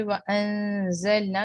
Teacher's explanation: تھوڑا سا اسٹریچ کرتے ہوئے زا کی بزنگ واضح رکھیں